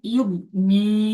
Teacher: ইয়া মাদ্দাকে একালিপ পরিমাণ টান দিয়ে পড়তে হবে।